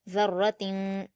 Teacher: کے بعد شین ہے تو جیسے کہ آپ کو ابھی بتایا یہاں پر تا کی تنوین میں اخفا ہوگا، ذرتن، شین پر حرکت جلد پڑھیں گے اور را پر تشدید · ذال پر حرکت جلد پڑھیں گے اور را پر تشدید ہے، ذال کو را سے ملائیں گے، را کو پر پڑھیں گے، جلد پڑھیں گے،